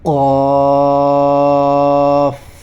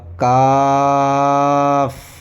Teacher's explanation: یہ قاف یہ پر ہوگا، موٹا ہوگا، یہ باریک ہوگا، کاف